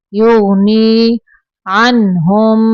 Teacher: غین کو پر پڑھنا ہے غین کو قلقلہ نہیں کرنا